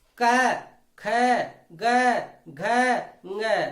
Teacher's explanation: तो यहां हम देखते हैं हमारी जिह्वा कंठ पर जाकर के टच करती है, स्पर्श करती है। और जब हमारी जिह्वा कंठ पे स्पर्श करती है तो उसी के आधार पे इन वर्णों का उच्चारण स्थान कंठ होगा। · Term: क वर्ग